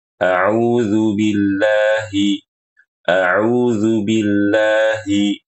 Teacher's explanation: jangan ditutup Bil Bil Bil jadi suaranya tidak keluar lalu ya ketika baca Billahi itu dengan ha besar Jangan dibaca Billahi dengan ha kecil